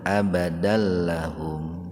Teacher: Abadallahum kan bila guna, dimasukkan tanpa mendengung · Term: idgham bila guna